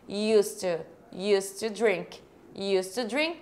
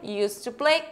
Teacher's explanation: Mas, como não é uma questão agora de você dizer que costumava, aí existe essa regrinha, você não vai falar esse D, você não pronuncia ele. E você fala tudo junto aqui, ó. Used to drink.